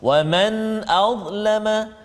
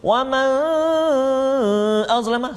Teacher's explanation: nun mati bertemu dengan hamzah, hukum dia izhar halqi, tak boleh dengung